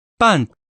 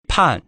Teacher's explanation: the pronunciation has changed from the original B sound to an aspirated P sound